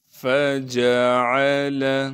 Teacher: فجعل، فا کو بغیر کھینچے پڑھیں گے، جیم کو بھی بغیر کھینچے پڑھنا ہے، عین کو صاف کر کے گلے سے نکالیں گے، لام کو بغیر کھینچے پڑھیں گے۔